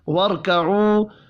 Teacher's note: را ساکن سے پچھلے حرف کے اوپر زبر ہے، را کو پر پڑھیں گے ، واو مدہ کو ایک الف کے برابر کھینچ کر پڑھنا